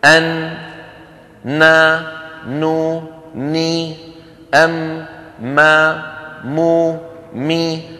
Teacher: هي صوت يجري في التجويف الأنفي · مهما كان وضع النون ومهما كان وضع الميم فلا تخلوان من غنة، لأن الغنة جزء منهما.